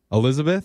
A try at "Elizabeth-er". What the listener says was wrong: It's just Elizabeth, and then you add an E-R.